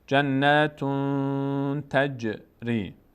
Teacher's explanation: جنتون، صدا میره در بینی، مقداری نگه میداریم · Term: اخفا